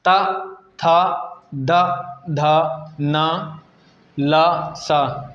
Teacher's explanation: त थ द ध न ल स ये जो होते हैं ये दंत से बोले जाते हैं अतः इनका नाम दे सकते हैं इनका उच्चारण स्थान दंत हो